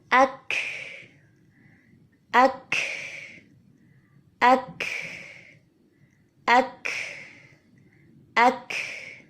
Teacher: زبان کی جڑ کو تالو کے نرم حصے پہ، جہاں پہ سخت حصہ شروع ہونے لگا ہے، وہاں پہ ہم نے زبان کی جڑ کو ٹکرایا۔ جیسے ہی ہم نے فورسفلی زبان کو یہاں ٹکرایا تو زبان ٹکراتے ہی شدت کی صفت نمایاں ہوئی اور پھر فوراً ہی زبان نے جگہ چھوڑی اور پیچھے سے تنفس یعنی سانس چلتا ہوا باہر آ گیا اور ہمس کی صفت نمایاں ہو گئی۔